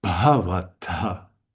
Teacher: The stress, the emphasis should be on the first, because there are three short syllables here.